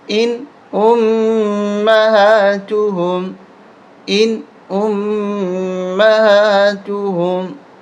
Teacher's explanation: ان یہاں پر غنہ نہیں ہوگا، اس لیے کہ نون ساکن ہے، اس کے بعد حمزہ آ رہا ہے، حمزہ حروف حلقی ہے۔ ان امہاتہم، ان امہاتہم۔